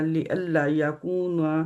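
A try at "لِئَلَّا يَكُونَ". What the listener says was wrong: ये अल्लाह, अब इसको छोटा नहीं करना, इसके आगे लाम के आगे अलिफ है, मद है।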